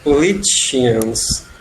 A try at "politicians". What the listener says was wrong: Yeah, politicians.